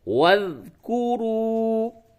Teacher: واو ذال زبر وذ، کاف پیش کو، را واو پیش رو. یہ واو ساکن سے قبل پیش ہے، واو مدہ ہے تھوڑا سا کھینچیے